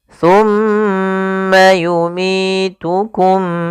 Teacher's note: adanya huruf mim yang berharakat tasydid dan diwarnai dengan warna hijau cara membacanya yaitu suara mimnya ditahan dulu jangan langsung dilepas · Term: ghunah